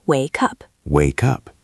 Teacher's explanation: He took the K sound from the end of wake and he moved it to the beginning of up. It sounds like wake up.